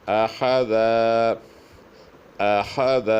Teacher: حمزہ کو پتلا، خا کو موٹا اور دال کو پتلا ادا کرنا پڑے گا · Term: خا موٹا